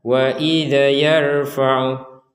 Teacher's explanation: jadi tidak ada e di sukun nya Dal ini jadi harus jelas dui adalah huruf mati ya huruf yang sukun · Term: Dal sukun